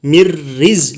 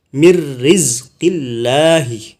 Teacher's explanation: Jadi selain lam sama ra, salah satunya lam dan ra juga di sini, itu disebut namanya idgham bila gunnah, artinya memasukkan tanpa berdengung. Jadi mirriz langsung.